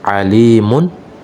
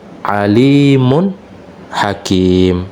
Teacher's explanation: ada bunyi nun sukun pada pengucapan tapi ya Nun sukunnya tidak ada pada tulisan